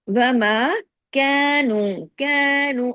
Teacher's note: میم کے ساتھ الف ہے لیکن باریکی سے پڑھا جائے گا